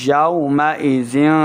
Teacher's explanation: واو ساکن سے پہلے ہے زبر تو واو لین ہے، ہم لین کو لمبا نہیں کریں گے